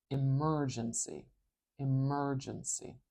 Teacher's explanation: Can you hear how the merge part is a little bit louder? I'm going to put this little straight, it looks like an apostrophe, but it's a little straight apostrophe before the M. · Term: primary stress